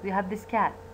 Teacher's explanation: you have this cat يعني الكات ما راح تلفظ بطريقة كاملة اللسان راح يبقى على الالفيولار ريج لذلك راح يصير عندنا missing explosion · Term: unreleased t